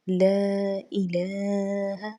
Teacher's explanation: لام کو ایک الف کے برابر کھینچ کر پڑھا جائے گا کیونکہ اس کے اوپر کھڑا زبر آ چکا ہے۔